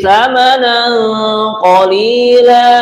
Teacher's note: tsa tsamanan ini mendengung karena tanwin berjumpa dengan qof adalah ikhfa bacaannya